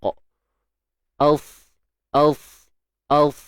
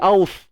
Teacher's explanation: Als di belakang gigi sebelah bawah. So untuk sad ni dia tebal. Angkat pangkal lidah dan sebahagian besar lidah kita. Yang disebut sifat itbaq. Als. Dia takkan jadi aus.